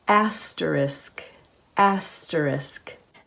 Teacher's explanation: There is no letter X at the end of the word. The two letters, S and K, make the sound sk, not x.